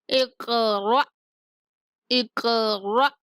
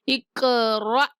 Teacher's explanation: حمزہ ساکن کو جھٹکے کے ساتھ ادا کریں گے